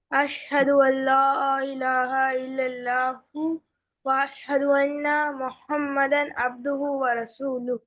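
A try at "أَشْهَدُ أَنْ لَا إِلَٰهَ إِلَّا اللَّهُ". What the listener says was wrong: जी, इसमें भी है तो बहुत जल्दी जल्दी पढ़ गए आप। अशहद है बेटा, यहाँ अशहदु अल्ला इलाहा है ना।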